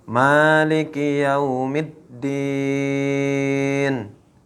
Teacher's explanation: kalimat Maliki itu dibaca panjang dua harakat · Ma yang ada kepada kalimat maliki itu dibaca panjang 2 harokat, yaitu hukumnya adalah mad tabi'i.